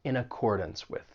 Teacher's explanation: that final syllable in accordance even though it's spelled d a n ce. You're not going to say dance. It's going to have that schwa sound. It's going to sound like dunce.